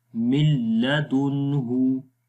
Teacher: وجہ اس کی میں پہلے بھی بتا چکا ہوں کہ نون اور لام کیونکہ قریب المخارج ہیں، ان کے مخارج قریب ہیں، اس وجہ سے قریب المخارج کو اکٹھا پڑھنا مشکل ہوتا ہے. اس لیے نون کو ہم نے ختم کر دیا اور ڈائریکٹ میم کو لام کے ساتھ ملائیں گے، مل. تو مل آسانی کے ساتھ پڑھیں گے، مل لدنہ.